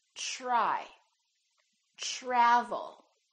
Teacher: it becomes like a CH sound we say try try so the TR together make this sound almost like a CHR almost like CH but it's a softer one